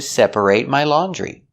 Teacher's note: the reason we pronounce it eight in the verb separate is because that syllable is stressed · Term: long a sound